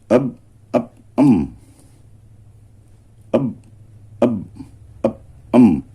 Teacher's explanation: Sekarang coba bandingkan antara bunyi ab, ab, ab, ab, Ketiga bunyi ini ternyata dihasilkan dengan memadukan atau mempertemukan antara nomor 2 atas dengan nomor 2 bawah. Ya, antara bibir atas dengan bibir bawah.